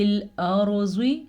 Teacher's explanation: زواد کو بھی پر کر کے پڑھیں گے کیونکہ زواد حروف مستعلیہ میں سے ہے